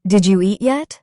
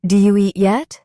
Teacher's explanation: In fast English, did you becomes do you.